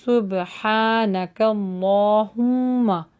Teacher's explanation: الف جو یہاں پر آ رہا ہے اللہ کا، آپ دیکھ رہے ہیں کھڑی زبر ہے تو اس کو تھوڑا سا لانگ کریں گے، اور میم کے اوپر تجدید ہے تو اس پہ غنہ ہوگا، سبحانک اللہم، بی وا پہ ہونٹ آپ کے گول ہوں گے اور یعنی ای کا ساؤنڈ نکلے گا، وبی حمدک وتبارک اسمک وتعالی جدک ولا الہ غیرک۔